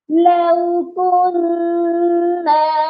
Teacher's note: نون مشدد پر پہلے غنہ کرنا ہے اور پھر اس کو ایک الف کے برابر لمبا بھی کرنا ہے، کیونکہ اس کے ساتھ بھی الف مدہ ہے۔